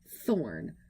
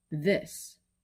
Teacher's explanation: But when you add voice to that, it becomes words like this. See, even though both of them use the th sound, they're actually different th sounds. One is voiceless and one is voiced.